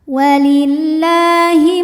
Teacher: Karena lam berbaris fathah panjang maka lam kita panjangkan dua harakat. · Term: mad thobi'i